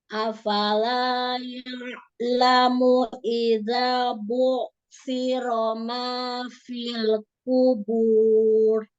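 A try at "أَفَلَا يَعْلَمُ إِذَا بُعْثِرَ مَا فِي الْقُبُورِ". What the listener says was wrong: Qafnya angkat lagi pangkal lidahnya ya. Fil kubur. Roknya tebalkan lagi. Fil kubur.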